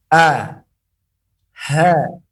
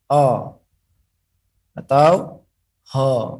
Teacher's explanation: makharij daripada huruf H dan A ini keluar daripada tenggorokan yang paling bawah. Dengan cara merasakannya dan memfokuskannya kepada tenggorokan yang paling bawah.